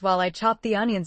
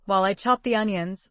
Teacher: When we say, "While I chopped the onions," we link the words while I chopped the onions. It sounds like one smooth phrase.